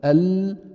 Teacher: فيها بدها تطلع تصعد تصعد الى ما يحاذيها مع ما يحاذيها من اصول الثنايا العليا او نسميها يعني لثه الاسنان العليا هونيك شو بيخرج حرف اللام